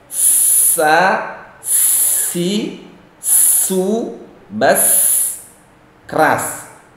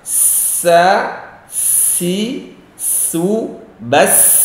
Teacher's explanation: Sebenarnya bahasa sifatnya adalah sofir. Dibaca dengan desis yang lumayan keras.